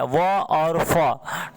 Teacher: दांत और ओठ की मदद से बोला जाता है, व और फ। ठीक है, तो ये जो है दंतोष्ठ से बोला जाता है।